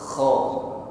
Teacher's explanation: Ingat ada gesekan di tenggorokan sehingga ada bunyi dengkur ya. Namun dengkurnya lembut saja, tidak perlu ditekan secara berlebih.